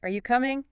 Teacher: Rising intonation for a yes no question. When you're really not sure of the answer